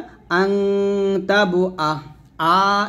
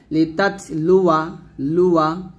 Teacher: তারপরে লা, এক লিফ টান দেওয়া যাবে না, জবরের পর খালি আলিফ থাকা সত্ত্বেও টান দেওয়া যাবে না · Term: আলিফের জায়দা